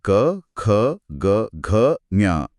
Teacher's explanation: इनका उच्चारण स्थान कंठ यानी गला है। ध्वनि सबसे पहले गले से ही उठती है। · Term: क वर्ग